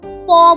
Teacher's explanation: দেখো ঠোটটা জুড়ে গিয়ে তারপর খুলে গেল আবার। তাহলে এই যে জুড়ে গেল শ্বাসবায়ু কিন্তু কিছুক্ষণের জন্য পুরোপুরি আটকেছে।